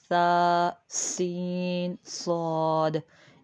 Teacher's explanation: सा को नरमी से, सीन को सीटी के साथ और स्वाद को पुर मोटा पढ़ेंगे